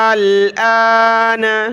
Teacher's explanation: حمزہ لام کھڑا مد زبر, آل, حمزہ کھڑا زبر آ, نون زبر نہ, آل, آن, آن. پہلے حمزہ کو زیادہ کھینچیں گے, لام کے ساتھ ملائیں گے, اور اس دوسرے حمزہ کو ایک الف کی مقدار کھینچیں گے